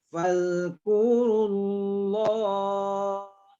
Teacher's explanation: Allah itu kita baca tebal karena dia tafkim.